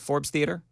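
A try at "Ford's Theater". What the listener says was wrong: Ford, F-O-R-D. Ford Theater. No S.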